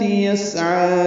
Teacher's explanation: سین ساکن پہ ہمس ہوگا، صفیر کی آواز سے ادا کریں گے، عین وسط حلق سے ادا کریں گے، 2 حرکات لمبا کریں گے۔